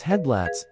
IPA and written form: ˈhɛdˌlaɪts (headlights)